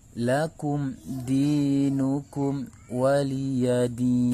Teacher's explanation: Lakum di, mim sukun bertemu dengan huruf dal adalah merupakan salah satu hukum bacaan izhar syafawi, karena ada mim sukun bertemu dengan huruf hijaiyah selain mim dan ba. Maka mim sukun ini dibaca dengan izhar atau jelas. Lakum dinukum, di adalah mad tabi'i karena ada ya sukun sebelumnya kasrah, maka dibaca panjang 2 harokat.